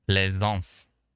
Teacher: Phonetically S as a Z